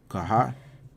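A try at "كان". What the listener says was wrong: That's an N there.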